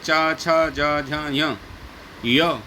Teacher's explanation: इनका उच्चारण स्थान तालु है।